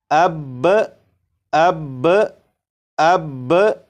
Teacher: وقف کی صورت میں با کے اوپر جو زبر ہے، زبر کو نہیں پڑھیں گے، صرف تشدید کو پڑھیں گے۔ تو وقف میں اسے اس طرح پڑھیں گے جیسے اب اب اب۔